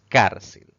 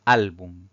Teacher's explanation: la mayor fuerza recae en la penúltima sílaba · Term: palabra grave